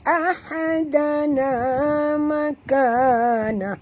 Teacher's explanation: Ha di sini ha pedas, jangan tebal ringan saja.